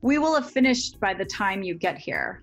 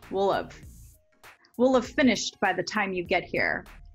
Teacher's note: we often link and reduce will and have to sound like willuv, willuv, or sometimes even willa willa